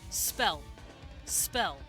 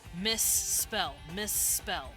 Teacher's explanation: i'm holding that s out just a bit longer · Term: gemination